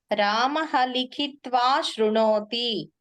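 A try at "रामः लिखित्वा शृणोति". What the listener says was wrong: ఉత్తమం, సమ్యక్.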